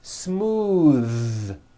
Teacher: believe it or not the th sound in smooth is voiced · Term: voiced TH